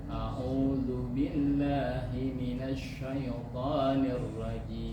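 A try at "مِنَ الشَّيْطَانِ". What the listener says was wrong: Himinasya, nggak perlu dimonyongin, nggak ada huruf yang perlu dimonyongin di situ. Himinasyaiton.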